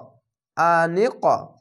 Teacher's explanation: কলকলা ধাক্কা মেরে ওপরে সাউন্ড যাবে। হামজা যাবার আ নুন কবজার নিক আনিক তুলু চিকন চিহ্ন মাদ্দে আরজি তিন আলিফ টেনে পড়বেন।